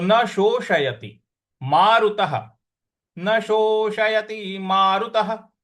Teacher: बड़ा वाला स है, उसके ऊपर, उस पर हमको बड़ा वाला स पर ओ की मात्रा है, और फिर षटकोण वाला श है। तो षटकोण वाले श को हमको जीभ को रोल करके मूर्ध्वा पे लगा करके बोलना है।